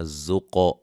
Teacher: قاف کو موٹا اور قلقلہ